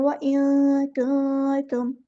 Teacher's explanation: नून की आवाज़ को छुपाएँगे तो एक अलिफ के बराबर रुकेंगे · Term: इख़फ़ा